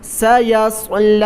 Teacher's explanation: سین کو باریک، صاد کو موٹا